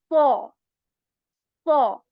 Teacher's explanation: how you are going to make the sound of this sod letter heavy is that you raise the back part of your tongue a bit